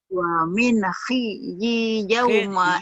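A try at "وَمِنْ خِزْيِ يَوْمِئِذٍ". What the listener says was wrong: Khidyi. Wamin khidyi yaumi idzin. Bukan yauma. Yaumi. Yaumi. Yaumi idzin. Wamin khizyi yaumi idzin. Wamin khizyi yaumi idzin.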